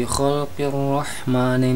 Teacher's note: di depannya ada huruf ro yang ada tanda tasdidnya, ketika dibaca alif lamnya tidak tampak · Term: alif lam syamsiyah